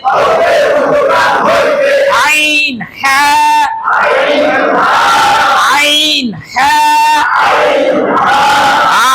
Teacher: আর আইনটা একটু গলার মাঝখানে চাপ দিয়ে উচ্চারণ করব।